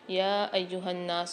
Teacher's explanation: یا ایہا الناس، یہاں پر یا کے اوپر مد بھی ہے، کھڑا زبر بھی ہے، تو یہاں 3 سے 4 الف کی مقدار یا کو کھینچیں گے، نون کے اوپر مشدد ہے، غنہ کر کے پڑھیں گے۔